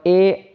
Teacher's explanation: कंठ और तालू यह दोनों का स्पर्श होता है एक कंठ का भी और दूसरा तालू का भी इसीलिए इसको कंठ ताली भी तल भी कहते हैं ठीक है